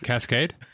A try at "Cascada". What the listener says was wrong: No, it's not Cascade. Cascada. No, there's an A at the end.